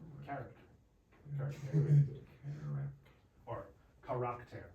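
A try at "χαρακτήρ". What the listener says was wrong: You said care, but it's an eta. But it's, but air.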